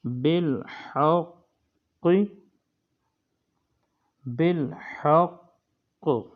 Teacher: وقف کی صورت میں تشدید کو باقی رکھنا ہے اور جو ہے متحرک حرف اس کو نہیں پڑھنا بلکہ تشدید کو باقی رکھنا ہے۔